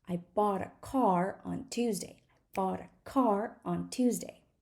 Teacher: the time between the stressed syllables is roughly the same and we fit everything else in between we squish everything else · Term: stress time language